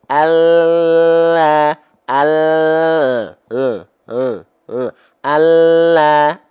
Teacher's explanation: lam itu keluar dari tepi lidah kiri bagian depan dan tepi lidah kanan bagian depan, menyusur sampai ke ujung lidahnya, disentuhkan ke langit-langit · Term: huruf lam